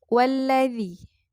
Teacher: alif lam yang pertama yang sukun tidak dibaca, maka dimasukkan kepada lam yang kedua. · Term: idgham syamsiyah